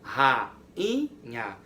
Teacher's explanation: Eu consigo ouvir o som do A, eu consigo ouvir o som do U, eu consigo ouvir o som do A e do U de forma separada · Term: hiato